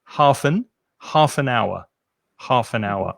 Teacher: the word our begins with a vowel sound obviously it's written with an h but the h is silent